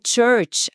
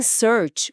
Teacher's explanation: a língua precisa bater firme atrás dos dentes para criar aquele som explosivo do tch